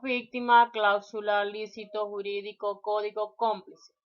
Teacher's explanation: Y siempre las palabras esdrújulas y sobre esdrújula llevan tilde si la palabra lleva la mayor fuerza de voz en la antepenúltima y anterior a la antepenúltima sílaba.